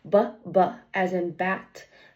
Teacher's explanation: So, bbb. And then it is a voice sound because my vocal cords are vibrating as I'm making the sound